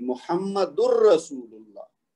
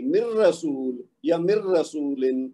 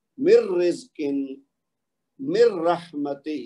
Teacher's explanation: ویسے تو اگر علیحدہ کہیں گے تو محمد ہے نا, محمد پہ اگر ہم ویسے بھی رکیں تو پھر تو تنوین گرے گی, لیکن اگر ہم ملا کے پڑھیں تو ویسے تو لفظ محمد ہے نا کامل اگر لفظ دیکھا جائے تو, لیکن جب را کے ساتھ ملے گا تو اس کی جو تنوین والی نون کی آواز ہے وہ گر جائے گی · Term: بلا غنہ ادغام